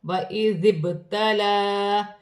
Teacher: با ساکن ہے، حروف قلقلہ میں سے ہے، اپنے سے پہلے حرف کی حرکت کے ساتھ ملا کر پڑھا جائے گا، قلقلے کے ساتھ ادا کیا جائے گا